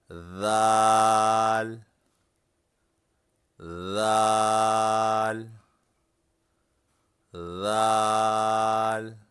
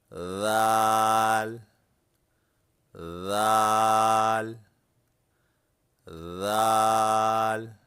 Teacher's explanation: ذال کو ادا کرتے وقت زبان کی نوک اوپر کے سامنے والے دانتوں کی نوک پر رکھیں